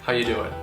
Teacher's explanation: the most reduced form of this greeting would be to eliminate the word are altogether